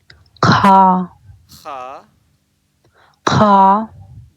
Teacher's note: تو جو خا کا جو مخرج ہے وہ منہ کی طرف والا حصہ ہے، یعنی بالکل جو شروع والا جو پارٹ ہے اس پارٹ سے خا کی ادائیگی ہوگی